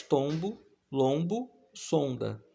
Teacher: o fonema vogal nasal ON, representado pelos dígrafos OM e ON, aparece nas palavras tombo, lombo, sonda